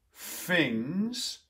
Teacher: for some cockney speakers for example they might actually say things more of an f-like thing